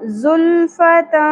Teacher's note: ذلفتا سین سیٹی کی اواز انی چاہیے · ف تنوین کے بعد حروف اخفا میں سے سین آ گیا، اس لیے یہاں پر اخفا مع الغنہ ہوگا